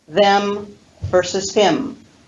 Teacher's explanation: i'm emphasizing those two pronouns and therefore i can use a full vowel quality